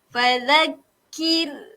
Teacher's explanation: sebelum ra ada huruf yang berbaris bawah. Jadi ra tersebut kita kena nipiskan. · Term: nipiskan ra